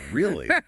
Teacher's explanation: if you're skeptical it might go down